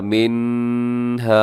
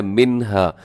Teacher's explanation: حمزہ ہا، عین ہا، غین خا، جب بھی یہ حروف نون ساکن اور تنوین کے بعد آئیں گے تو اپنے نون ساکن اور تنوین کی آواز کو ظاہر کر کے پڑھنا ہے، اس کی آواز کو چھپانا نہیں ہے ناک میں، بلکہ تیزی سے پڑھ جانا ہے۔ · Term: اظہار حلقی